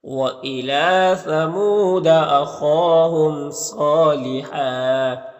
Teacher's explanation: صاد حروف مستعلیہ میں سے پر پڑھیں گے، کھڑا زبر ایک الف کے برابر کھینچیں گے۔ یہاں پر دو زبر پہ وقف کریں گے تو ایک زبر کے ساتھ الف پڑھیں گے · لام میں کھڑا زبر ہے تو اسے ایک الف کے برابر کھینچیں گے